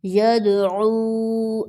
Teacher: اب عو کو اس لیے کھینچا ہے کیونکہ اس کے ساتھ واو ساکن ہے یعنی واو مدہ ہے